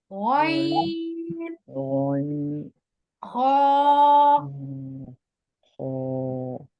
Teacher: یہ دونوں حروف حلق کے اوپر والے حصے سے ادا ہوتے ہیں اور زبان کے پچھلے حصے کو اوپر کی طرف بلند کرتے ہوئے موٹی آواز میں پڑھا جاتا ہے